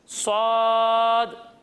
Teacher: जब हम स्वाद की अदायगी करेंगे तो इसे हम मोटा कर कर पढ़ेंगे